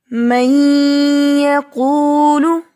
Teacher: نون کی آواز ناک میں غنہ کے ساتھ ٹھہر رہی ہے